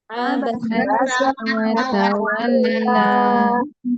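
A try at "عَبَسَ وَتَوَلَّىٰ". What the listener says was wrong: di situ pakai huruf sin, Bu, ya. Tidak boleh pakai abasya, tapi abasa.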